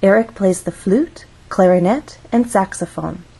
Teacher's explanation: we're listing information Eric plays three instruments one two three when we have a list we use rising intonation in each phrase until we get to the final item of the list so we're actually going to go up on flute then we'll · of syllables makes a difference in how we rise or fall flute has one syllable so we only have one syllable to make our voice glide up · we're actually going to go up on flute then we'll go up again on clarinet